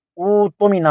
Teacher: دوسرے حمزہ ساکنہ کو حرف مدہ یعنی واو سے بدل کر او تمنا پڑھا جائے گا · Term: قاعدہ ابدال